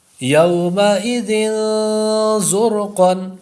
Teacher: کأسا دہاقا بخس دراہم سمیع علیم صراعا ذلك یتیما ذا مقربۃ خلق عظیم صعیدا زلقا یومئذ زرقا. زر زا جو ہے تھوڑا سختی سے پڑھیں گے اور سیٹی کی آواز بھی پیدا ہوگی زا کے اوپر